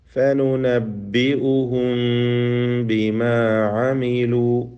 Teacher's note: നബി ഉഹൂ എന്നിങ്ങനെ വിടവ് ചുണ്ട് തുറന്നു വെക്കണം എന്ന് ഇല്ല. മറിച്ച് ചുണ്ട് പൂർണ്ണമായും അടച്ചു പിടിച്ച് അമർത്തി പിടിച്ച് വ്യക്തമാക്കി ഇൽഹാറാവാത്ത വിധത്തിൽ ചുണ്ടുകൾ ചേർത്ത് വെച്ചുകൊണ്ട് പരത്തി വെച്ചുകൊണ്ട് ഉള്ള ഉച്ചാരണം, അതാണ് ഇഖ്ഫ കൊണ്ട് ഉദ്ദേശിക്കുന്നത്.